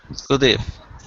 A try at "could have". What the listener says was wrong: hearing could if. I need to hear a V sound. I need to hear a V sound like could have.